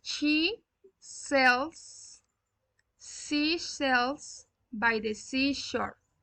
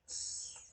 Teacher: the tongue is behind the front teeth and the airflow is pushed through a small opening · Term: fricative